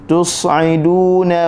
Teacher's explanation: tus huruf sad, tus hujung lidah berada di dalam mulut, tidak kena di mana-mana bahagian, dan ada angin dan suara yang keluar